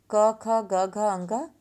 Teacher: इन व्यंजन का उच्चारण कंठ का जिह्वा के मध्य भाग से स्पर्श होकर निकलता है। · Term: क वर्ग